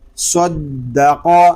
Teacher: یہاں صاد اور قاف اس لیے پر ہیں کہ یہ حروف مستعلیہ میں سے ہیں، دال مشدد میں کلکلہ اس لیے ہو رہا ہے کہ دال حروف کلکلہ میں سے ہے، اور جب حروف کلکلہ مشدد ہوں تو ان کو جماعوں کے ساتھ ہم ادا کریں گے۔